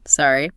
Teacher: A simple, sorry, with a rising tone works perfectly to ask them to repeat.